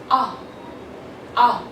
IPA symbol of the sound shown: ʌ